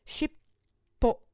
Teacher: The double P being caused by a small tsu.